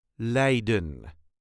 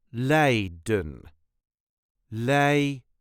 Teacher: there is a very light emphasis on the first syllable